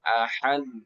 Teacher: kemudian Dal langsung pantul jangan tahan